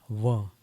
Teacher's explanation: व का उच्चारण दांत और होठ से होता है, व। और जो कल हमने उदाहरण दिया था उर्दू भाषा का फक्र, उसका उच्चारण भी फ के नीचे नुक्ता लग जाता है, एक डॉट होता है, एक बिंदी होती है, तो फिर उसका उच्चारण फ ना होकर के फ बन जाता है। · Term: दंतोष्ठम